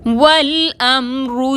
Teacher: والامرو میں رو پر پیش ہے، رو کو موٹا پڑھیں گے